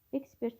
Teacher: Ekspert sözünə vurğu birinci hecadadır. Birə C D elipsiz ekspert birinci hecadadır.